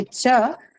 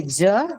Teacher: CH is voiceless and J is voice what do we mean by voicing voicing means there is a · Press it towards your throat a little bit, and you can see as you say ch, there's no vibration. You say j, and you can feel a vibration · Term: voiced